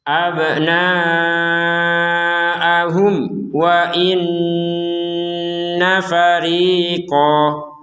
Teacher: Ada nun bertasydid, kita membacanya dengan dengungan. Wa inti dari dengungan itu adalah rongga hidung.